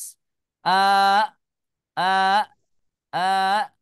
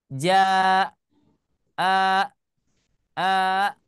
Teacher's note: Kalau kita mengucapkan huruf hamzah, suaranya itu terputus.